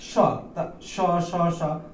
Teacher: অধিক শ্বাসবায়ুর প্রয়োজন হচ্ছে, সহসা একটা শীষ আওয়াজ হচ্ছে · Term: উষ্ম ধ্বনি